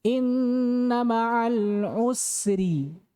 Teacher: Ra kalau di kasrah, tipis.